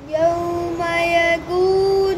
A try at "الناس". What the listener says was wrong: नहीं नून, नूल नहीं, नून